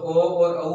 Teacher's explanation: जो ओ और औ है वो कंठ और होठ से बोले जाते हैं